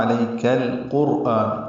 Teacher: آ مد اصلی قائم مقام ہے، 2 حرکات لمبا کریں گے · کاف باریک پڑھیں گے اور لام سے ملا دیں گے. اظہار قمری ہوگا.